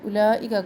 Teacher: واو silent ہے، اس کو ہم نے نہیں پڑھنا